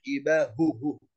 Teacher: يعني أظهر حرف الهاء في كلمة جباههم وكلمة عليهم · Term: الإظهار